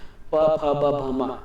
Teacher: उसके बाद है आपका होठ आता है, वह से होठ लिखा हूं, प फ ब भ म। जब भी हम इसका उच्चारण करते हैं प वर्ग को, तो हमारे दोनों होठ आपस में चिपक जाते हैं